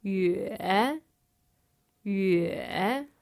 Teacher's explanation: The third tone, which is the dipping tone.